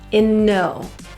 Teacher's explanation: Because in ends with an N and no starts with an N, as we link it, we will say that one time.